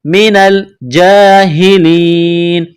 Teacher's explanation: جیم کے اوپر کڑا زبر ہے، ایک الف کی لمٹ میں کھینچنا ہے